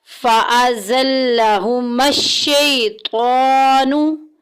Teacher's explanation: شَیْ کو لمبا نہیں کرنا، حروف لین میں سے ہے، یا لین کا قاعدہ جاری ہو رہا ہے۔ بغیر کھینچے، بغیر جھٹکا دیے نرمی سے معروف پڑھیں گے۔